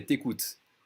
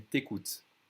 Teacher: Remember, tu écoutes, whenever you have a vowel after the tu, we're going to drop that U when we speak fast